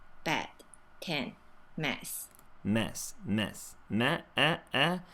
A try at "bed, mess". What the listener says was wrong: Heading towards kind of the a vowel there. It's a mix between the a and the mess. So the difference between this e vowel and the a vowel is in the tongue position and the lip corners here.